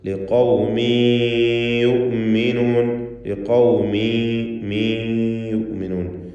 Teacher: ഖാഫിന് പൂർണ്ണമായ തഫ്ഖീം കൊടുക്കുക. ഖൗമിൻ എന്ന തൻവീനിന് ശേഷമുള്ള യായിൽ ലയിപ്പിച്ച് മണിക്കണം. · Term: ഇദ്ഗാം ബിഗുന്ന നാഖിസ്